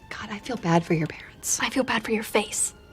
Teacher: parents has stress on the first syllable pair and the second syllable n is reduced to a schw vowel so it sounds more like rather than NS let's listen God